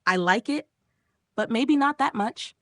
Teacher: Fall rise intonation. Your voice goes down and then up. Used to show hesitation, doubt, politeness, or contrast.